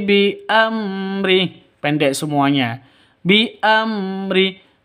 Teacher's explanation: Mim mati bertemu dengan ro jelas terang. Mimnya mim sukunnya jelas mim matinya jelas rnya juga jelas. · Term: izhar syafawi